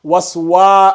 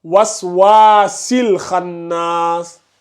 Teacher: il y a le mad bil alif sur le wa, là. Il faut l'allonger. Ce wa, là, tu dois dire waswa.